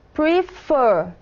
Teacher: Vemos claramente que a última sílaba é a sílaba mais acentuada. Prefer. Então, aqui temos consoante, vogal e consoante. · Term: sílaba tônica